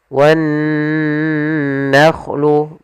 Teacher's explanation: Alif lam di sini kita namakan dengan alif lam syamsiyah, yang mana alif lam yang ditulis tapi tidak dibaca. Kemudian pada lafal nun bertasydid di sini ada bacaan gunnah, yaitu adanya nun bertasydid. Cara membacanya ditahan dulu suaranya wan nakhlu, baru dilanjutkan ke gunnahnya.